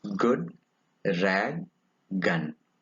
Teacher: It is a voiced velar.